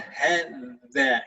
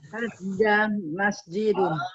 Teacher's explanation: Kalau dzal, ya. Jadi ujung lidahnya ditaruh di antara sela-sela gigi Seri atas dan bawah